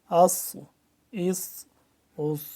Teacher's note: साद को भी आवाज तो सीटी की तरह सख्ती है लेकिन जरा मोटा है · صاد ذرا موٹا ہے سین کی نسبت، ٹھیک ہے۔ حمزہ صاد زبر اس، حمزہ صاد زیر اس، حمزہ صاد پیش اس، اس اس اس۔